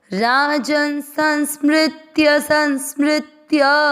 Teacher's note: स के ऊपर बिंदी आधा न नाक से पढ़ा जाएगा संस मृ का मतलब हुआ म आधा और नीचे ऋ से